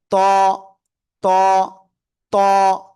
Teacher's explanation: জিহ্বার আগা সামনের উপরে 2 দাঁতের গোড়ায় লেগে একটু মোটা আওয়াজে আমরা এই অক্ষরটা উচ্চারণ করব।